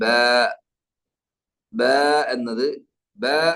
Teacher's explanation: ബ എന്ന അക്ഷരം ഉച്ചരിക്കുന്ന സ്ഥലം രണ്ട് ചുണ്ടുകളുടെ നനവുള്ള ഭാഗമാണ് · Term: മഖ്റജ്